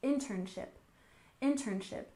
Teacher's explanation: internship with stress on the first syllable